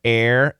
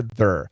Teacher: This is a long AR, air, and this is just a schwa R, there.